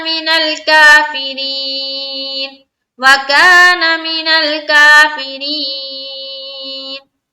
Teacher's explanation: का में हम करेंगे अलिफ मद्दा, मीनल जज्म का कायदा है, काफिरीन री में या मद्दा कर रहे हैं, और यहाँ पर जो रा है इसको हमने बारीक रखनी है क्योंकि रा के नीचे क्या है, जेर है